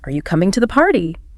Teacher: rising intonation at the end of yes-no questions